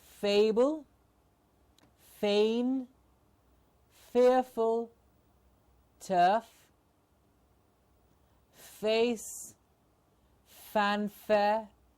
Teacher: Remember, the airflow continuously heard, initial and middle. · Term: fur